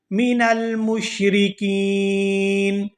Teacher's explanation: وقف کی صورت میں نون جو ہے یہ ساکن ہو جائے گا